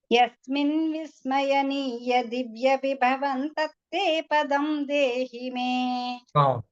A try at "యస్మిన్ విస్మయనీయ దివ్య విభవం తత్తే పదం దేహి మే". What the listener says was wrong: బాగుంది.